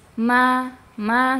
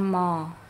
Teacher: huruf mim itu dibaca tipis. Ma ma jangan mo ya. Jangan ditebalkan.